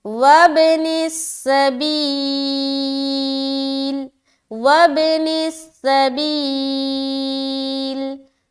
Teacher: واو کو با سے ملاتے ہوئے پھر ہم قلقلہ کریں گے، کیونکہ با حروف قلقلہ میں سے ایک ہے